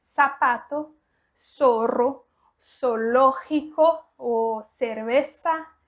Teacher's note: Você pode pronunciar o Z com o som de S, que também está 100% correto